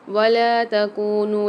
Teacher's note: نون کے ساتھ بھی واو مدہ اور مد آ رہا ہے تو اس کو 3 سے 4 الف مدار کھینچیں گے